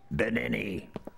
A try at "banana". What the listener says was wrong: Those vowels shouldn't be I's. They should be A's. Banana, not Benini.